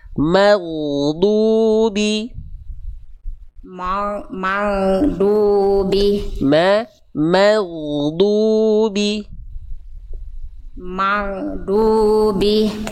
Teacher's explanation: Mananya tipis dulu baru ginya tebal.